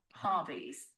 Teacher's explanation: Soft stress on the first syllable.